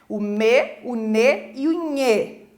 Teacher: ao produzir esse som, tem um tanto que sai pela boca, mas um tanto você acaba expelindo esse ar pelo nariz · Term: consoantes nasais